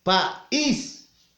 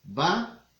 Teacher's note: la mayor fuerza de voz recae en la vocal cerrada, en la I